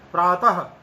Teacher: वास्तव में प्रातः काल, यहां प्रातः त के बाद में विसर्ग है, विसर्ग का उच्चारण हम एकदम स्पष्ट रूप से जैसा होना चाहिए वैसा कर रहे हैं। प्रातः आधे हकार जैसा उसका उच्चारण हो रहा है, लेकिन आगे काल का ककार है उसके, यानी ककार से ठीक पहले विसर्ग है।